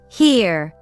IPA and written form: hɪər (here)